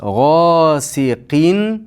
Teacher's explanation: Qin deb tanvinni aniq aytamiz, chunki bu yerda hamza bor. Bu hamza esa izhorlaridan. · G'osiqin, ikki harakat miqdori cho'zasiz. G'osiqin. Qin deb tanvinni aniq aytamiz, chunki bu yerda hamza bor.